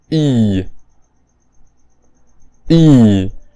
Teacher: this sound is simply the rounded version of e